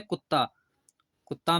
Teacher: कुत्ता में त और त के बीच कोई स्वर नहीं है। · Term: द्वित्व व्यंजन